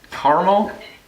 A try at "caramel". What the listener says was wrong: I feel like you're putting too much emphasis on words that or letters in the word that you don't need to.